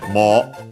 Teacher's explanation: The accent is on the mo, high-low. Can stay on the u, on the longer vowel. · Yeah, so on the mo, it can stay on the u because, yeah, o-u is actually read as long o. Mo, so yeah, a single syllable.